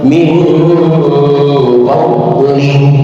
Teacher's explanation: Fadli donnya bukan huruf qalqalah, mohon jangan dikolkolahkan, bacalah tanpa pantulan qalqalah